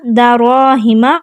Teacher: دراہم را کو پر اور موٹا پڑھیں گے کیونکہ اس کے اوپر زبر ہے، آگے الف مدہ ہو رہا ہے تو 2 حرکات ہم لمبا کریں گے۔